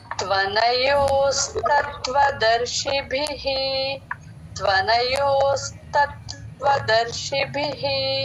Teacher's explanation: last లో భి మహా ప్రాణం చూసుకోండి అందరూ